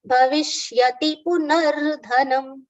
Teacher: Bhavishyati, stress on B, short sound for V here